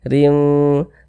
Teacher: Huruf ra memiliki harokat kasrotain dibaca tipis.